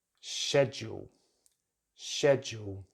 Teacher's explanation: the correct British English pronunciation is schedule, schedule, with stress at the beginning of the word, just like it is in American English.